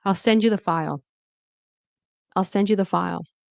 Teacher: So the D and the Y turn into a J sound.